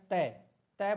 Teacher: जो जीभ है वह दांत के टकरा रही है